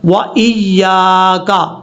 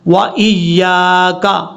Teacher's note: یا کے آگے الف ہے، اس کو لمبا کر کے پڑھنا ہے